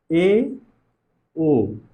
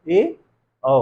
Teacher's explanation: इन स्वरों का उच्चारण करिए तो हमारा मुख ना तो पूरी तरह से बंद है ना तो पूरी तरह से खुला हुआ, आधा खुला, इसकी तरह, इससे थोड़ा सा ज्यादा खुला रह रहा है। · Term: अर्ध संवृत्त